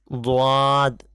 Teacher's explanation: जबान का किनारा यानी आजूबाजू का हिस्सा आसपास का हिस्सा यह दाढ़ से जिससे हम चबाते हैं उससे मिलकर दद अदा होता है